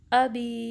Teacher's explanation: इसको लंबा भी ज़्यादा नहीं करना, आ भी ऐसा भी नहीं पढ़ना, बस जल्दी से आ की साउंड एक हरकत होनी चाहिए, और फिर बी 2 काउंट्स